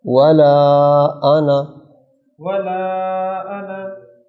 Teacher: اس کو انا کو لمبا نہیں کرنا، یہ الف نہیں پڑھا جائے گا